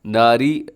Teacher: اصحاب النار، الصاد موٹا ہے اور النار یہاں پر نون مشدد کی وجہ سے غنہ ہے، اور آخر میں جو را لکھی ہوئی ہے را موٹی پڑی جائے گی، کیونکہ را ویسے تو ناری اگر ملا کے پڑھیں گے تو ناری میں را باریک ہوگا، لیکن اگر وقف کریں گے تو را ساکن ہو جائے گی، اور جب بھی را ساکن ہوتی ہے تو اس سے پہلے والا حرف پھر دیکھتے ہیں، اگر اس کے اوپر زبر ہو تو را پر پڑی جاتی ہے، یہاں پر بھی را پر پڑی جائے گی.